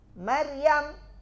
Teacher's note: Ma tipis. Ra tebal. Ya tipis.